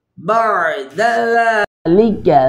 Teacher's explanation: ذال کو نرمی سے ادا کریں گے، باریک پڑھیں گے